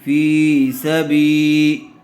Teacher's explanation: زیر والے حرف کے بعد یا ساکن آئی ہوئی ہے تو یا مدہ ہوگا، فا کو تھوڑا کھینچ کر پڑھیں گے۔